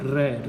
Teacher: जब बोलते हैं तो अपने से जीभ होती है वो 2 से 3 बार अपने तालु के साथ में ऐसे टकराती है और बहुत ज़्यादा घर्षण होता है, उसको हम प्रकंपित कहते हैं।